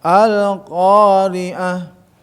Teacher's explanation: qo yang betul-betul harus qo jangan k ya tidak ada sifat Hames di situ ya sifat syidah Qalqalah yang kuat yang mantul maka qo ya · huruf qaf itu huruf al-isti'la, ya, huruf yang terangkat lidahnya. Harus diangkat juga biar nggak ada gitu kan, ya, nggak ada dan kalau tidak terangkat ke atas sehingga akan ada betus gitu, hamas, desis. · dengan tenggorokan gitu kan bukan huruf tenggorokan huruf lisan huruf lidah si qo sama Ka tapi pangkal ya terangkat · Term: huruf alistilla